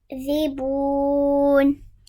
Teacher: So the waw sakin, stretch the bu.